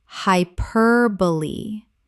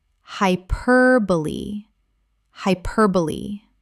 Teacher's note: Four syllables. The E at the end is pronounced. This surprises almost everyone.